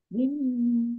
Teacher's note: mim tasdid bacaan ghunah atau mendengung ditahan dua harakat